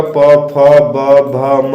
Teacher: आप स्पर्श करके भी देख सकते हैं। जब आप प, फ का स्पर्श उच्चारण करते होंगे तो आपको सिर्फ ओठ स्पर्श होगा